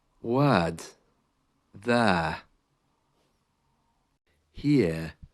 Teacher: you can hear that the letter R is almost silent